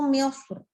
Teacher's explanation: cenderungnya ke tebal. Karena dia sebelumnya huruf tafkhim.